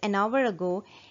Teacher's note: h is silent therefore the first sound that you hear is of an o and not h that is the reason we use an article n with r